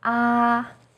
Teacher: first tone is high and steady